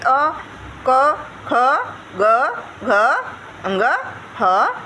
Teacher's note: अ का उच्चारण स्थान कंठ, जब भी हम लोग बोलेंगे ना तो देखिएगा, बोल करके देखिएगा, कंठ से ही ध्वनि निकलेगी।